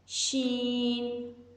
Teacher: شین کی ادائیگی کے وقت وسط لسان تالو سے نہیں چپکتی بلکہ ان حروف کی آواز زبان اور تالو کے درمیانی حصے سے ہوا کے ساتھ نکل جاتی ہے